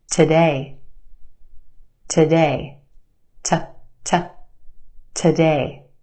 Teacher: Again, we've got two syllables in this word. Our second syllable has the stressed or emphasized vowel sound. A. We stretch that sound and put it in the spotlight. · We stretch that sound and put it in the spotlight. The first syllable is where we have our schwa sound.